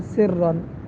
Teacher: را کے اوپر تشدید کے ساتھ ساتھ زبر بھی ہے تو اس کو ہم موٹا کر کے پڑھیں گے